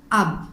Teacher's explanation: For example, alif ba zabar ab. Here during the pronunciation of letter ba sound is stopped at 2 lips